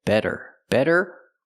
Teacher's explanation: the t is a fast D